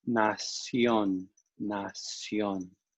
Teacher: A, yo, a, y, o, a, yo. When you have an I and an O next to each other, they kind of merge into a longer sound.